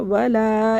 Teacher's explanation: واو کو ہونٹوں سے پڑھنا، ولا الف سے پہلے زبر ہے، اس کو کھینچنا ہے